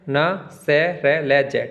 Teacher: बत्स्य जो होता है जीवा का अग्र भाग ऊपर के दांतों से थोड़ा ऊपर मसूड़ों को स्पर्श करता है।